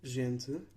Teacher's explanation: These vowels become nasalized if M or N precedes the vowel, and M or N will not be pronounced as a consonant itself. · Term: nasal vowels